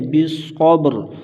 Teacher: وتواصوا، یہاں پر بھی واو لین بغیر کھینچے بغیر جھٹکا دیے نرمی سے معروف پڑھیں گے۔ بالصبر، صاد کو موٹا کریں گے، با پر قلقلہ کریں گے اور اس را کو بھی موٹا کریں گے، کیونکہ را ساکن سے پہلے ماقبل بھی ساکن ہے اور پھر ماقبل سے پہلے زبر، سے را کو موٹا کریں گے۔